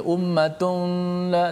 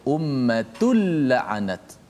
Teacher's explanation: Maka cara baca itu tanwin tu dimasukkan dalam lam secara total. Maknanya tidak ada lagi tanwin nun tu. Ummatun dah tak ada dah. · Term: idgham bila gunnah